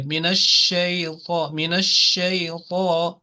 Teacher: The couple of points I like to mention to this boy, that first of all, when we say at-ta'awudh, a'udhu billahi minash shaitan rajim, remember on sheen there is a shadda, that is why we say minash shay. And sheen has the quality of spreading its sound, and it is called tafashi, means it has the attribute and the quality to spread.